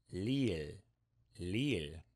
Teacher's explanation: this sound is in between r and l in that it's kind of like r it's kind of like l but it's not r and it's not l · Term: korean rdl